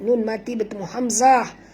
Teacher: Nun mati bertemu hamzah. Izhar halqi ya. Tak boleh dengung.